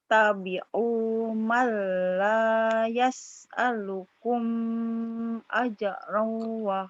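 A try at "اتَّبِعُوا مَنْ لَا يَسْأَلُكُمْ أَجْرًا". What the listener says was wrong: tapi kumnya jangan ditahan. idhar. Ittabi'u malayas alukum ajro. Kum ajro segera.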